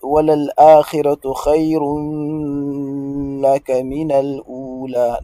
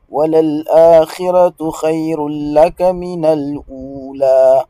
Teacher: bighayri gunna donc vous avez tanwin suivi par la lettre lam la lettre lam implique un idgham ici mais sans gunna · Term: idgham bighayri gunna